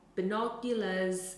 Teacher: So, binoculars might be bi-no-ulars, and you can’t hear the c. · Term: sounds within the syllables can be omitted